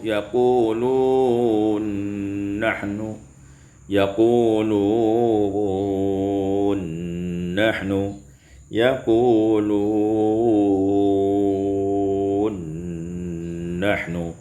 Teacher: Pada ayat yang ke 44, yaquluna nahnu, idghamun nun fin nun, diidghamkan nun pada nun maka menjadi yaqulun nahnu, yaqulun nahnu, yaqulun nahnu.